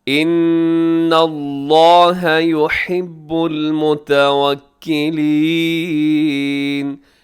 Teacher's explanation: ان یہاں نون مشدد پہ غنہ ہے، لفظ اللہ یہاں بھی موٹا ہے۔